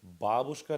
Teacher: The emphasis is on the first syllable.